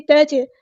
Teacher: تا باریک پڑھیں گے، جیم پہ کلکلا ہوگا